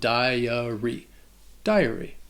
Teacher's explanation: the first syllable has that long I sound, that die, followed by the schwa, dahy-uh, and then the Y at the end has a long E sound, dahy-uh-ree.